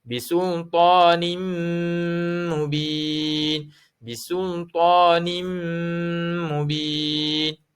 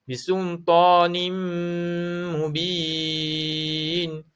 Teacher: Dengung. Dengung ni dengung tutup mulut. Dengung tutup mulut.